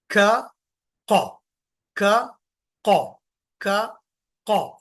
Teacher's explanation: जबान का जो आखरी हिस्सा है वो ऊपर के नरम गोषट में लगेगा